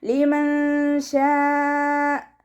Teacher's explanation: ഇവിടെ നൂൻ സാക്കിനയ്ക്ക് ശേഷം ഇഖ്ഫാഇൻ്റെ അക്ഷരമായിട്ടുള്ള ഷീന് വന്നു. നൂൻ സാക്കിനയെ മറച്ചു വെച്ചിട്ട് മണിച്ചോതി കൊടുക്കുക. ഷീനിൻ്റെ കൂടെ മദ് വന്നു.